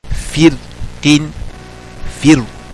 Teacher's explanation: Both are allowed. In this word, both tafkhim and tarqiq of ra are permitted. Tafkhim is due to musta'liya, this one.